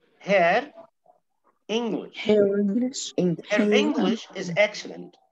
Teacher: speakers with non-rhotic accents often use the phoneme R to link the preceding vowel to a following one. الناس اللي هم non-rhotic دولت بيقولوا أنا حنطق ال R لو كان جاي بعدها vowel.